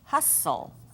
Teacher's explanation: that case another example would be Hustle final stable syllable but we don't hear the T